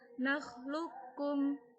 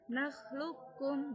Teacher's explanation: Contohnya pada qaf dan kaf, nakhluqukum. Jadi bukan membacanya qafnya dikolkolakan, tapi langsung qafnya itu menuju huruf kaf. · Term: idgham mutaqaribain